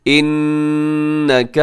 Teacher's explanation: ایسے نون پہ غنہ کیجیے گا کیونکہ نون مشدد ہے